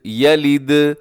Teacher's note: دال کو آپ نے قلقلہ کرنا ہے، دال کو ہلانا ہے